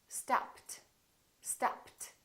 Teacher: What happened to the ed? It became a t